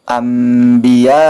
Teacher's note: mati atau tanwin bertemu dengan huruf iqlab atau huruf ba maka nun mati tersebut harus diganti menjadi huruf mim disertai dengan dengung